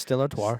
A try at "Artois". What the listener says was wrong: Stella Artois. Artois. No, it's Artois. Artois. You're putting an R at the end. There's no R at the end. Yeah, you said Artar.